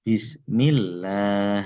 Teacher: jika lafdzul jalalah, lafal Allah didahului oleh huruf yang berharokat bertanda kasroh, maka huruf lamnya dibaca tipis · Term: lam tipis